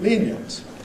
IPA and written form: ˈliːn-jənt (lenient)